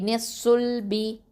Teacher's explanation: அந்த ஷாது வந்து ஹெவியான லெட்டர், ஸோ பின்னாவை உயர்த்தி சொல்லுங்கள்